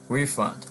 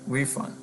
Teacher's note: As a noun, refund. Okay, we stress the first syllable, refund. Repayment of a sum, okay, of money.